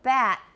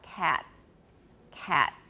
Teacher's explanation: when we have a final stop in words, so here it gives you examples like cat and bat, we often have a glottal stop there because we're going down to a creak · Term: glottalized final stop